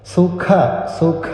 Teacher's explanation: അഖ അല്പം ശക്തി കൊടുക്കുക അതിഖരമാണ് മഹാപ്രാണാക്ഷരം കൂടിയാണ്